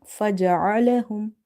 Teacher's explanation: Ain is from the middle of the throat.